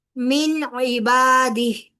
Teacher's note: من نون ساکن کے بعد عین حروف حلقی میں سے ہے، لہذا نون کا اظہار کیا جائے گا